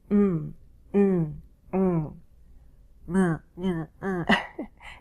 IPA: m, n, ŋ